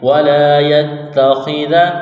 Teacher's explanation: خا زیر خی، خا کو موٹا کرنا ہے